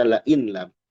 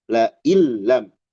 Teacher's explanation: diidgamkan tapi tidak disertai dengung